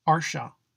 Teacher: it's pronounced like a sha but with the tongue a little further back in the mouth